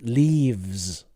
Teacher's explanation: Should be vz. We need that voice at the end. Leaves. Vz.